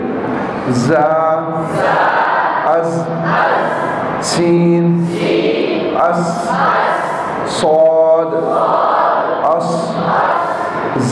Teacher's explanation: 3 حروف جن کے اندر سیٹی ہوتی ہے